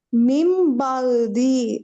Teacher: நூன் சாக்குனுக்கு அடுத்து வர எழுத்து இக்லாபுடைய எழுத்து ப வந்திருக்கு அதனால முன்னாடி இருக்க நூன் சாக்கின மீமா மாத்தணும்